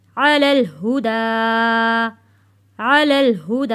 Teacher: کھڑی زبر بھی ہے اور چھوٹا مد بھی ہے، اس لیے ہم اس کو 3 سے 4 حرکت کے برابر کھینچ کر پڑھیں گے